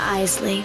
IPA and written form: ˈaɪzli (Isley)